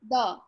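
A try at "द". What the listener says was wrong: Simple the. No H sound. The. The. And although there is the here, it's not the. It's the. Use your tongue again.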